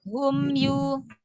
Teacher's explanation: Mim dibaca jelas tanpa tambahan gunnah. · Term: idhar syafawi